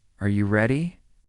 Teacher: For example, when a native speaker asks a yes or no question like, "Are you ready?" the pitch of their voice goes up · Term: intonation